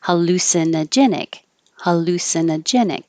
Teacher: lu is secondary stress so it'll be a little longer